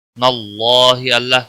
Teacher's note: اللہ کے لام کو موٹا پڑھیں گے، اس کے اوپر کھڑی زبر ہے، ایک الف کے برابر کھینچ کر پڑھیں گے۔